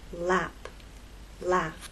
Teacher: The tip of your tongue dropped to make the next vowel sound.